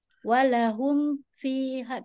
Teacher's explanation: Mim mati bertemu dengan fa walaupun yang izhar syafawi tak boleh dengung. Kalau kita tak jaga-jaga dia senang untuk kita dengung di sini.